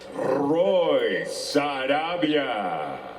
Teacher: A very soft rolled R